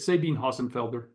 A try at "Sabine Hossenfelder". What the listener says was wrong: Yes, Sabina, yes. The German, Sabina, so you pronounce the E. Sabina Hossenfelder, yeah.